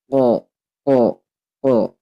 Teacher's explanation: Huruf qaf ini berarti dia harus tebal, pangkal lidahnya harus dinaikkan ketika dibaca. Ko. Awas, jangan sampai tertukar dengan huruf kaf.